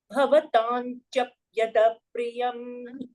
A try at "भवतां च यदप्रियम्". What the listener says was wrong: च is not a द्वित्वा यदप्रियम् भवतां च यदप्रियम्